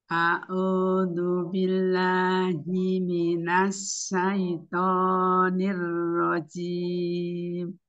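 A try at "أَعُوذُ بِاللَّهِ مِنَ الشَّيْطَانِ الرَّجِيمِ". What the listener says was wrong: Ya, pada ta'awuz itu ada shin. Shin ada sifat tafasi dari tengah lidah ya, berbeda dengan sin. A'udzu billahi minasyaitonir rajim.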